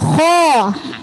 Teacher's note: kho itu huruf tebal di tenggorokan